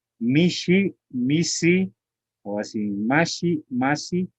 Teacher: la sha se vuelve sa, la si se vuelve shi